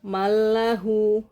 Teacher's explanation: kalau ee yang bila ghunah mallahu langsung enggak ada gunahnya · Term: idgham bila ghunah